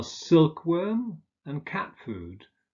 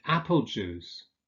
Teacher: So that's called lexicalization. Examples are silkworm and cat food, where the first element is stressed.